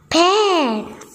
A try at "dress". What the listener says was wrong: Nih baca letter apa ini? Letter apa ini? Pa, itu bukan pants. Bukan p tapi d.